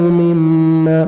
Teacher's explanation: میم مشدد ہے, غنہ کریں گے, نوز میں ساؤنڈ لے کے جائیں گے